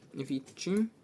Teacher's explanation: відчим буде подовжений звук ч